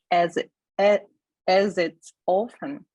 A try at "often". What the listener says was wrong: Often. Remember the cute puppy sound? Often. Not ow, just aw. Like, aw, that is so sweet. Aw. Often. By the way, guys, you can say often. It's also okay. It's normal. Often. I say often. As it's often. If you're having trouble with the aw sound, you can say ah, often. Often.